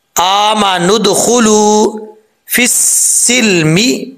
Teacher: फा को जब सीन से मिलाएंगे तो बीच में या और अलिफ और लाम गिर जाएगा, इसको पढ़ने की जरूरत नहीं है।